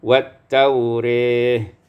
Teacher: wat taurah imalatu fathatur ra, diimalahkan fathah ra menjadi wat taurih.